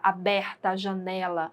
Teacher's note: as vogais a e é são pronunciadas com a boca bem aberta